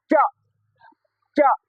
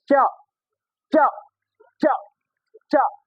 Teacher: कहां जाकर के छूता है च च च बोलते हैं तो हमारी जीवा अंदर में जाकर के दांत के ऊपर वाले हिस्से में सट है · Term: तालव्य वर्ण